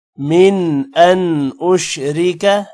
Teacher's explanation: من پر غنہ نہیں ہوگا کیونکہ آگے حروف حلقی حمزہ ہے